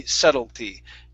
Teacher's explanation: Now this is one of the times, you guys, when we have a word that ends with a ty, and that t is not pronounced as a flap t.